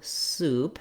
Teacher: we think about that tense oo sound, that might help our brain know how to pronounce it.